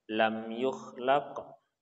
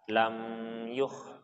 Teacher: mim sukun bertemu dengan huruf ya maka kita tidak boleh menahan tapi harus kita lepaskan